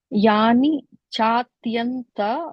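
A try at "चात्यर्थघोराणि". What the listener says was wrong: Chatyartha ghorani. There's no in sound there, just the it and ir. Chatyartha.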